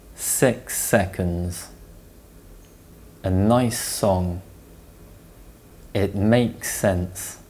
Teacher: the sound and the next word starts with the S sound the two sounds join together producing one slightly longer sound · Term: linking